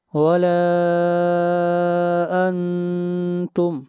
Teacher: انتم کے اوپر آواز ناک میں جائے گی، اخفا ہوگا